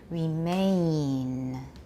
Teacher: You're going too fast, and the N is coming too soon. The N is very, very short. Make the A part really long.